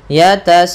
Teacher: Panjangnya adalah 4 atau 5 harokat. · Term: mad wajib muttasil